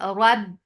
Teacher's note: Rab, ra is heavy for fatha open jaws attached with ba. Ba will get sifa of shidda. There is no flow of sound.